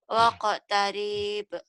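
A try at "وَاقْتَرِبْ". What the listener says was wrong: kenapa panjang? Siapa yang manjangin? Kenapa panjang?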